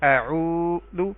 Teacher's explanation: واو ساکن اس سے پہلے پیش تو اس کو ہم واو مدہ کہیں گے اور ایک الف کے برابر لمبا کریں گے